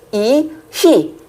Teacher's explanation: 공기를 더 많이 내보내서 흐 발음을 하는 거죠. 이, 히 발음하는 방법은 똑같은데 공기만 더 많이 나와요.